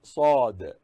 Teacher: In Sad, Sa sound should be hard, and also it should be pronounced as if the mouth is filled with something.